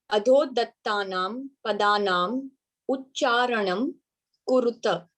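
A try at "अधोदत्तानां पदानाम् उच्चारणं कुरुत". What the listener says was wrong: Very good. Yes.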